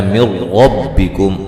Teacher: یہاں نون ساکن کا ادغام بلا غنہ ہے، غنہ نہیں کریں گے ، ربکم را کو موٹا ادا کریں گے، انی اخلق لکم